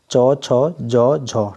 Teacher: इनका उच्चारण आपका तालुव्य से होता है